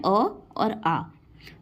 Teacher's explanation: अ और आ कंठ वाले होते हैं, ठीक है, कंठ स्वर होते हैं अ और आ। कंठ से आवाज आ रही होती है गले से।